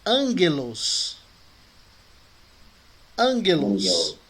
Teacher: Os dois gamas juntos, o primeiro é pronunciado como N. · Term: pronúncia de N